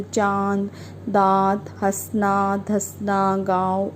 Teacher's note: अनुनासिक क्या होता है, इनका उच्चारण नाक और मुंह से होता है। अनुनासिक का उच्चारण नाक और मुंह से होता है,